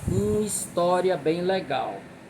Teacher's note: o ma de uma com o is de história se juntarão numa sílaba só. Então, mesmo começando com a consoante, esse H é como se não existisse, né?